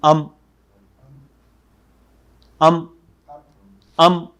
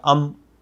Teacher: اب دیکھیے یہ حمزہ جو ہے جب میم سکون والے کے ساتھ ملے گا تو اب ہم اس کو پڑھیں گے حمزہ میم ام ام ام، میم سکون کے ساتھ ہے لہذا اب دوبارہ چھوٹے گا نہیں، ہونٹ الگ نہیں ہوں گے، وہیں پہ لفظ ختم ہو جائے گا